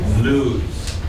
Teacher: Notice the word lose has a z sound.